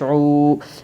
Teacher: میم الف زبر ما، بما، یا واو پیش یو، واو مدہ ہوگا، واو سکن سے پہلے پیش ہے اس لیے واو مدہ ہوگا، واو مدہ کو ایک الف کی مقدار کھینچ کر پڑھے گے